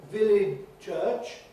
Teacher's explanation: apparently we all resist simplifying a sequence of 2 ch sounds or 2 j sounds